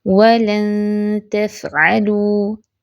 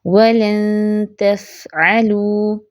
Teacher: نون ساکن کے بعد تا آ رہا ہے، اخفا بھی لائٹ ہوگا